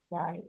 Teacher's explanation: Kalau zai lidahnya ada di dalam di gigi seri bawah.